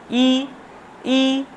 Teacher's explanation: ই, জিহ্বাটা ঠিক দাঁতের ওপরে যে মাড়ি তার ওপরের অংশে চলে যাচ্ছে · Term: তালব্যস্ব